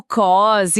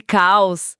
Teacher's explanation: quase tem um som suave de ó, mas se a pessoa puxar pro som de au, vira caos.